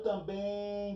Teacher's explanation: Também é oxítona. Olha o também demora mais tempo onde? No bem.